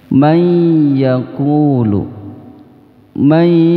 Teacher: nunnya sudah tidak terdengar lagi, masuk ke huruf iya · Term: idgham bi gunnah